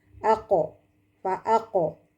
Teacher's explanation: huruf qalqalah sugro karena huruf qalqalah yang sukun asli di tengah kalimat